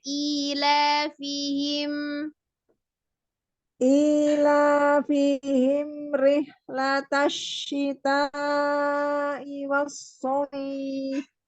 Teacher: Biasakan kalau misalnya ketemu dengan mim sukun itu tidak perlu ancang-ancang him begitu karena dia langsung izhar ya. Jadi hi-nya itu juga tidak panjang langsung disukunkan ke mimnya him bukan him ya.